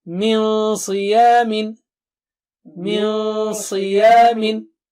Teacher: Sad is high, very thick and high, so Noon Sakina will be also very thick and high.